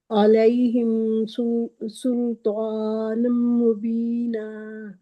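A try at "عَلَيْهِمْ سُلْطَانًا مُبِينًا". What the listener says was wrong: سل جو ہے وہ باریک ہے، سارے نہیں موٹے کر دینے۔ سلطانن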